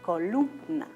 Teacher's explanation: Y tenemos otro ejemplo, la palabra columna. Entonces, ¿dónde está la mayor elevación? En lum, ¿no es verdad? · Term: sílabas tónicas